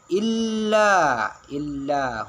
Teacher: Illa ujung lidah itu harus ada di mana ya? di langit-langit pas gigi atas. Nah, di depan itu ya. · huruf lam bertasdid itu harus dibaca dengan kuat atau harus ditekan ya